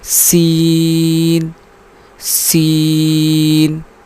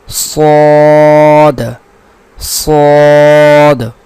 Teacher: سین کو ہم باریک پڑھیں گے اور صاد کو ہم پر پڑھیں گے